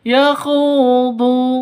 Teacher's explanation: Khu panjang 2 ketukan karena ada wawu mati diawali dengan dhammah, mad asli atau mad tabi'i.